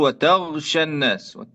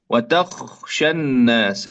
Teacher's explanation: hendaknya kita membaca huruf kho dengan jelas, jangan sampai berubah menjadi huruf ghain ya